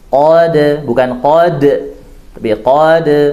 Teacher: Ya, huruf qaf ditebalkan, qad, tapi dia isti'la' dan dia infitah, tidak itbaq, jadi bukan o tapi qa, ya dia buka. Qad, pantulan ringan, pantulannya diringankan